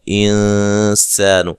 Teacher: سین کو باریک سیٹی سے ادا کرنا ہے